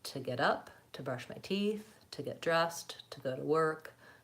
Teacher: the word to tends not to be stressed in running speech, so we don't pay a lot of attention to it. · It doesn't flow very smoothly. So if I can switch to using more of the vowel schwa, saying ta, it's going to sound more fluent